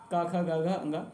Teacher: वर्ण हा कंठ में क ख ग घ माने क वर्ग पहला क वर्ग कंठ में आएगा